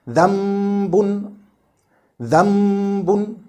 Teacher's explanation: There are three actions necessary for Iqlaab to be correct. First one, changing the noon sakin or tanween into a complete meme in pronunciation, but not in writing, so that no trace of the sound of noon sakin is left, like dhambun, dhambun, no trace of noon.